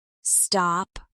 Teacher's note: In cold, the D is voiced softly, but it's still there. · in the word stop, the P is not explosive, but your lips still close